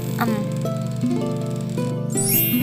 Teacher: bunyi yang dihasilkan dengan mempertemukan kedua Buah Bibir